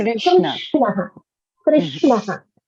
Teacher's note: towards the hard palate, but it doesn't really touch it. So there's a slight rounding of the air as it comes out, right? So the sound is slightly rounded